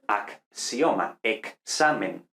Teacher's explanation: la X representa dos sonidos, ac, la K y luego la S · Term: consonantes dobles